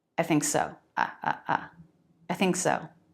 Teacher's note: When it's said so quickly, you can't really tell if I'm doing the full diphthong I or not.